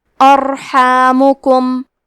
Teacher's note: ہا کی ادائیگی حلق کے درمیان والے حصے سے ہے. میم اور کاف پہ پیش ہے لہذا ہم یہ دونوں پیش کو برابر سے ادا کریں گے.